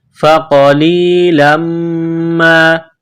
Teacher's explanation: تنوین کو میم کے ساتھ ملانا ہے، میم مشدد ہے، غنہ کریں گے، آواز ناک میں چھپائیں گے